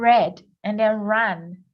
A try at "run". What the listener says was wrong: No, you just said ran. Did you just say ran? Oh, that's a U sound.